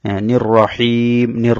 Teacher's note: র এর মধ্যে জবর হওয়ার কারণে র মোটা করে পড়তে হবে